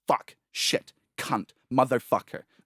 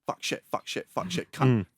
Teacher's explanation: British accent and Australian accent, short, guttural vowels.